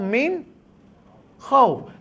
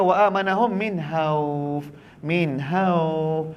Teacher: Kadang-kadang kita nampak titik kha, sebutan kita punya ha.